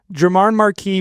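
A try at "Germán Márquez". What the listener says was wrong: Oh, because you were saying Marquis. Is the Z silent? Well, is a Z at the end of his name? German Marquez. You're making him like a guy from Paris.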